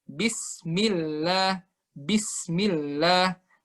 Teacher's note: kita cukup taruh di sin yang mati itu satu ketukan